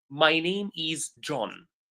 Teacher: if you are pronouncing a normal sentence, the intonation goes down.